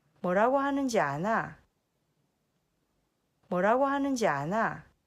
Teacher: it almost doesn't sound like a question it almost sounds like a statement